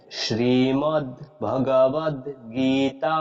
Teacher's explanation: যখন এই দীর্ঘ ইকারটা উচ্চারণ করব তখন আমাদের উচ্চারণের সময়টা একটু দীর্ঘ করতে হবে